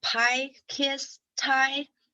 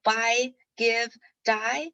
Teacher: the first three they're aspirated and the later three they're unaspirated by being aspirated it means that if you like use your · if you like use your hand in front of mouth then you can feel this puff of air that goes out of your mouth · And the b, g, d, as you try to pronounce this example words like pie, kiss, tie, or buy, give, die. So the first three, they're aspirated, and the later three, they're unaspirated.